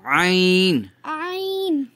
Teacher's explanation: حلق کے درمیانی حصے سے ادا ہوتا ہے عین